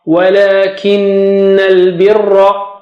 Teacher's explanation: ra is thick, okay, and nun mushaddad means غنة